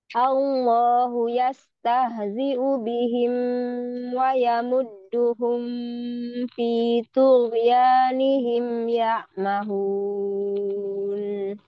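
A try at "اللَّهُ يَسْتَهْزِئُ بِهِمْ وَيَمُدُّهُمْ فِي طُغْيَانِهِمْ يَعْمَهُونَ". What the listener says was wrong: Mim sukun nggak terlalu lama zamannya. tawassut.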